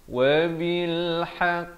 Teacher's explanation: Wa bil haqq, ha pedas, qaf dia bersabdu, qaf makhrajnya di pangkal lidah